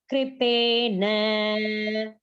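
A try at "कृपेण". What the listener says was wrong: Not na. Touch the tongue to the roof of the palate. Krupena. Ana. When you say ana, touch the tongue to the roof of the palate.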